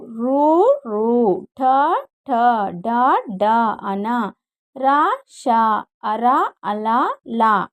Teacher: మూర్ధన్యములు నాలుక కొన భాగం నుండి పుట్టినవి మూర్ధన్యములు